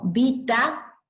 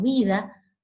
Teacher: Fíjense que estamos hablando de un fenómeno de sonorización de oclusivas intervocálicas. La T de vita es sorda y se sonoriza por la presencia de las dos vocales.